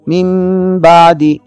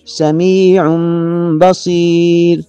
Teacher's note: نون ساکن اور نون تنوین کے بعد اگر با آ جائے تو یہاں غنے کی آواز کو میم کی شکل میں بدل کر ادا کریں گے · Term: اقلاب